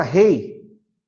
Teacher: A palavra rei tem uma vogal, que é a letra E. O I, ele sai mais fraco, é uma semivogal.